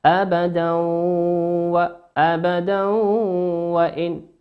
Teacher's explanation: والواو من حروف الإدغام بغنة، يغن بمقدار حركتين.